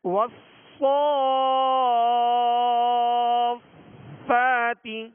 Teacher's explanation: صاد کو سیٹی کی آواز میں پڑھیں گے اور پر پڑھیں گے، موٹا پڑھیں گے